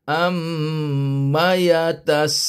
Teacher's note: am dua harakat sa lima harakat Lun empat harakat